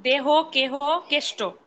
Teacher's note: হ কিংবা আকারবিহীন যুক্তধ্বনি পরে থাকলে এ সংবৃত হয়